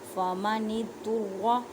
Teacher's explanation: را کو پر پڑھیں کیونکہ را کے اوپر زبر ہے